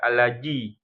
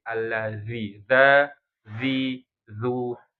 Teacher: harus ada gesekan harus menempel nih harus menempel ujung lidah sama ujung gigi seri bagian atas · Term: dzal